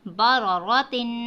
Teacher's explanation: دیکھیں یہاں پہ جب میں نے دو زیر کی تنوین پڑھا ہے تو میں نے ناک میں غنہ کیا ہے، ناک میں میں نے آواز چھپائی ہے۔